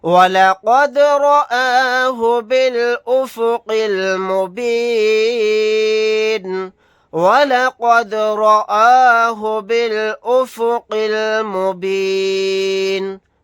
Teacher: وَلَقَدْ رَآهُ بِالْأُفُقِ الْمُبِينِ، وَلَقَدْ رَآهُ بِالْأُفُقِ الْمُبِينِ، دال ساکن ہے، یہاں پر قلقلہ کر کے پڑھیں گے، قاف کو موٹا یعنی پر پڑھیں گے، حالت وقف میں نون کو ساکن بنا کر پڑھیں گے۔